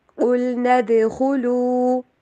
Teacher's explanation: قاف کو موٹا کرنا ہے، لام کے پرواز کو ہلانا نہیں ہے.